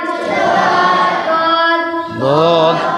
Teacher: শক্ত তালুর সাথে লাগিয়ে 7 নম্বর মাখরাজ জিবের কিনারা জিবের গোড়ার কিনারা জিবের গোড়ার কিনারা এবং তার বরাবর উপরে হাড়ি দাঁতের গোড়ার সাথে লাগিয়ে উচ্চারিত হয়